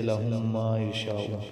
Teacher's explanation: ہونٹ ہیں، ہونٹوں کا خشکی والا حصہ، اس لیے اس کو ادغام شفوی کہتے ہیں